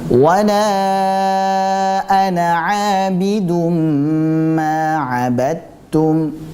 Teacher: Abidum kita tahan terlebih dahulu dengan tempo gunnah yang dipanjangkan. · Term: idgham bi gunnah